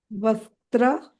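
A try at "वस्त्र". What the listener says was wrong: No, don't do Mahaprana. Vastra.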